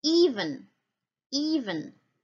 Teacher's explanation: it has no onset okay and it has no coda over here but it has only a nucleus the long e so that means that a single sound can constitute a syllable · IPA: [i-vən]